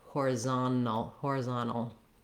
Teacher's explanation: American speakers will often also leave that T out and say it more like horizontal. Either one is correct.